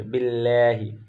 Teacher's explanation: باللہ لفظ اللہ سے پہلے زیر ہے تو لفظ اللہ کے لام کو باریک پڑھیں گے